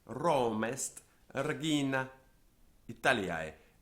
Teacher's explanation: Roma ends in a vowel, est starts in the vowel, and so we have something called elision, where Romest regina Italiae, and also regina ends in an A, Italiae starts with an I, so Romest regina Italiae.